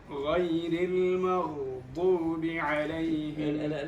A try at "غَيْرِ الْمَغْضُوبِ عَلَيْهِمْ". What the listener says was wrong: لا تطل. غير المغضوب، مش المغضوب. لا، الغين هنا هي من حروف الرخاوة، ولكن لا يعني أنها من حروف الرخاوة أن الإنسان يمكث عندها. لا يقول غير المغضوب، غير المغضوب، هنا الصوت يمشي.